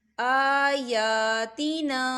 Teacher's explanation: یہاں پہ کھڑی حرکات ہے تو ہم اسے 2 حرکت کے برابر کھینچیں گے۔